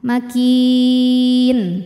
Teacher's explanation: Mad tabi'inya ya sukun didahului harokat kasrah, huruf yang disukunkannya nun, maka kafnya ini panjang, boleh 2, boleh 4 atau 6 harokat, asal konsisten dalam sekali bacaan. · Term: mad arid li sukun